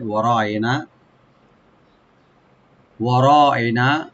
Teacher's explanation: ওয়া ওপেন রাখবেন, র ডিপ করে একালিফ টানতে হবে, আর নুন লাস্টে একালিফ টানতে হবে